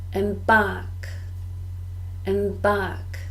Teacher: 2 syllables, and we stress the second.